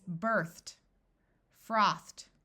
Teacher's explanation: ed sounds like a T after the unvoiced sound, which is th.